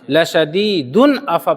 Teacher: تو تنوین کے بعد حمزہ ہے، تو اب یہاں پر ہم لَشَدِيدٌ أَف پڑھیں گے، اس میں ہم آواز کو بالکل ظاہر کر دیں گے